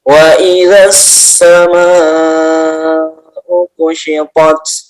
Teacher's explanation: Hamzah di dalam satu kata ya. Sama itu ya, panjang 6 harokat. Mad wajib muttasil.